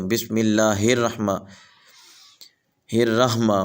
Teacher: یہاں اکثر حضرات یہ غلطی کر جاتے ہیں کہ اس ہا کو گلے سے نہیں نکالتے بلکہ سینے سے نکال دیتے ہیں